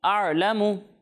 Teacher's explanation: एक और गलती है कि आइन जो है वो साकिन है और आइन साकिन में हम झटका नहीं देते